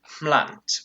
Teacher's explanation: becomes mlant with a voiceless bilabial nasal